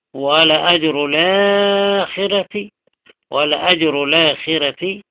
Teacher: ولا أجر الآخرة نقل وبدل فيه الطول والتوسط والقصر